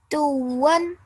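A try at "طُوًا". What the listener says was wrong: Not too hard because there's no shadda on the waw. A little bit softer. Tuwan.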